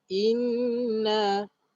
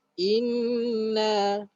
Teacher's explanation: Jadi maknanya inna ini keluar daripada rongga hidung. Inna. Cuba kamu baca inna, kamu akan rasa dekat kamu punya rongga hidung. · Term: nun syaddah